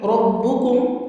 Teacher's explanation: ربکم میں را پہ زبر ہے تو را کو آپ موٹا کریں گے اور را تفخیم کے ساتھ پڑھیں گے۔